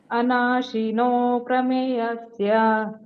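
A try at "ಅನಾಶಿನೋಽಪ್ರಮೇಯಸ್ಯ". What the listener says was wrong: ಆಮೇಲೆ ಮೂರನೇ ಲೈನು ಪ್ರಮೇಯಸ್ಯ, ದೀರ್ಘ ಇದೆ ಮೇಗೆ.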